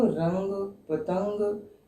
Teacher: नाक तो चल रहा है, मुंह नहीं खुल रहा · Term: अनुस्वार